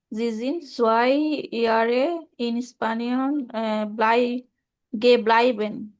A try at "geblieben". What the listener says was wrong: ব্লিবেন, খেয়াল রাখতে হবে। একটা হচ্ছে এটা হচ্ছে ব্লাইবেন, কারণ ই আই আছে, ব্লাই হয়। আর এটা হচ্ছে ব্লি হয়। আই আই সুইচ করেছে একটা, ঠিক আছে? এই জন্য আমরা বলবো হচ্ছে গেব্লিবেন।